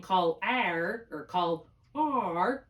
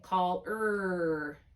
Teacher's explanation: the unaccented combination ar makes the unexpected sound of er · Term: er sound